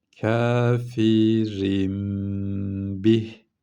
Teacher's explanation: Şu tenvinin sonundaki sakin nun var ya rin derken o nunu neye çevireceğiz? Söyleyin. Mime çevireceğiz. Ve burada da tutacağız. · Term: iklap